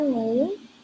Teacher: Contoh, name diucapkan name karena huruf A diucapkan dengan bunyi vokal panjang E dan E di akhir tidak diucapkan